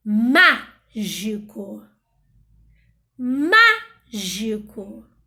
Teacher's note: não é o co, não é a última, não é o gi, não é a penúltima, é o mágico, é a antepenúltima.